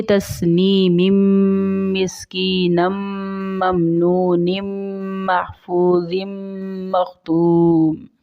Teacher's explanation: تنوین کی آواز کو ہم اس میں سے نون کی آواز کو مائنس کر کے میم کی آواز نکالتے ہیں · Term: مدغم